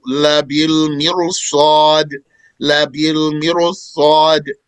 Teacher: the ra is thick, despite that it has an original kasra before it. Right. But after it, there is a letter of tongue elevation, isti'la, a letter of tongue elevation that does not have a kasra.